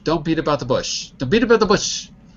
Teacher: T at beat becomes the D, like dog, and it connects to the about, so it's be the about.